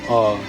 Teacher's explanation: The jaw drops. The throat opens. Nothing constricts the air anywhere. · Nothing [music] constricts the air anywhere. Modern linguists call it an open central unrounded vowel.